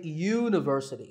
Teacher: So that first sound is a y sound, which is a consonant sound